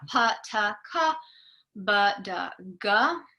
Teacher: producing these sounds is done by causing a complete closure of the vocal tract, and then you release it. So you can't hear these sounds until the release has happened. · ta and da are so-called stop consonants. That's because there's this total closure that doesn't actually make any sound until you release it.